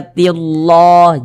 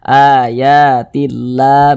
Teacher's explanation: kalau ada lafaz Allah sebelumnya ada baris kasrah, lafaz Allahnya dibaca tipis.